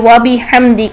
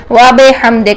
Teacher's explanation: को ए बेले कर देते हैं यह मजहू अंदाज होता है बी को बे नहीं करना है इसको बी ही रखना है ई की साउंड में लेकर आना है